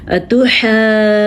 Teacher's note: اب یاد رکھیں ہم نے دو مدوں کے ساتھ ساتھ نون کا غنہ بھی اٹھانا ہے